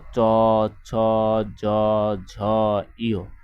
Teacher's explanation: এগুলো কিন্তু আমাদের তালু থেকে উচ্চারিত হয়, যেন তালব্য বর্ণ।